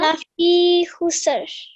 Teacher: fa has a kasra followed by a ya madda. So stretch that for about 2 seconds.